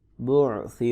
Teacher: را کو پر کر کے پڑھیں گے.